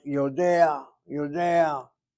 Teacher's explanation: the ah is sounded before the ayin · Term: stolen patach